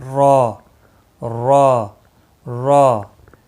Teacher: را پور پڑا جائے گا 1 الف کے برابر کھینچ کر